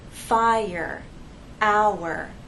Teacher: We have 2 vowel sounds, and there is a gliding, but there isn't a joining to make one vowel sound. The vowel sounds remain separate.